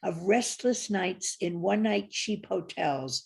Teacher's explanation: 10 syllables, 5 stresses, iambic pentameter